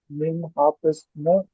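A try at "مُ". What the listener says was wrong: না, মিম হাফেজ না, হার নিচে আলাদা জের রয়েছে, তার মানে ও নিজে স্ট্রং। শুধু মিম পেশ মু পড়বেন এখানে, হ্যাঁ। আচ্ছা দেখেন, এটা যদি বানান করা যায় কিরকম হবে, মিম পেশ মু, হা ইয়া জের হি হয়, কিন্তু তারপরে দেখা যাচ্ছে শেষে তটাও সাকিন রয়েছে, মানে ত ধরতে হবে।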